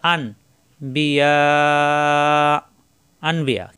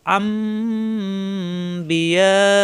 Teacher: এই নুন সাকিনকে এখন মিম ধরে গুণনা করে মিলিয়ে পড়তে হবে, আন পড়া যাবে না। এখানে আসছে আন বিয়া, আনবিয়া, আমাদের পড়তে হবে আম বিয়া। · আর এখানে নুন সাকিনের পরে বা আসায় এই নুন সাকিনকে পরিবর্তন করে মিম ধরে গুণ করে পড়তে হবে